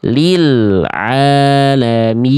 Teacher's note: Ah, lam sukun enggak ada qalqalah.